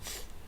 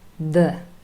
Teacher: That is the th sound, unvoiced, th, and the voiced counterpart, the. Both of them always represented by th.